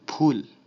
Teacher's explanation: উচ্চারণের সময় যদি শব্দটি বাংলা বা সংস্কৃত হয় তাহলে ইংরেজি পিএইচ এর মতো উচ্চারিত হবে, অর্থাৎ দুই ঠোঁট একসাথে লাগিয়ে উচ্চারণ করতে হবে, কারণ এটা একটা ওষ্ঠ বর্ণ। যেমন যদি বলি ফুল, এখানে পিএইচ এর মতো উচ্চারিত হচ্ছে।